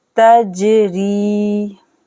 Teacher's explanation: या साकिन से पहले जेर है, या मद हो रहा है, 2 सेकंड के लिए खींचेंगे